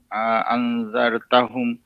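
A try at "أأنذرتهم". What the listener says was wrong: গুনাটা একটু long time করেন।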